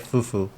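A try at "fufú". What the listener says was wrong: It's not fufu, it's fufu. There's an accent in it. In the last U. Fu. Say it with your chest.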